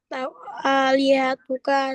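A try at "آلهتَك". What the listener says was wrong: Nah, bacanya fathah. Alihatana sama alihataka.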